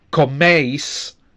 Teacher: we have two clear vowel sounds, eis, with the stress on the first one